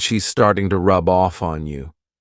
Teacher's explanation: I can take that B sound and connect it to the next word